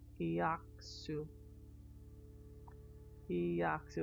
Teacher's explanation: E with a Y. Just assume there's a Y in between the I and the A. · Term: a glide